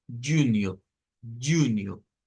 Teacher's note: El siguiente tiene ese sonido otra vez vibrante para la J, pero notemos que tiene también una U nasalizada y nos aparece el sonido de la ñ acá